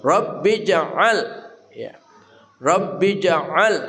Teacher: Rabbi ja'al, jimnya mati qalqalah sughra. Rabbi ya memantul dengan kuat.